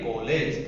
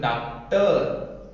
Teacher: आ तथा ओ के मध्य की ध्वनि आ के लिए के रूप में होता है, जैसे कॉलेज का आलेज, ठीक है, कॉलेज, ठीक है। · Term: आगत